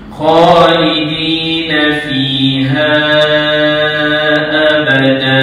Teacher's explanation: Dia berhenti. Maka panjang dua harakat. Kerana terjadinya hukum mad iwat.